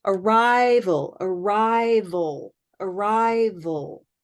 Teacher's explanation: it sounds a little bit like oh oh but it's not an o sound it's a dark L